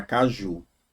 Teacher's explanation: caju demora mais no ju. Você não fala caju, fala caju. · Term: oxítona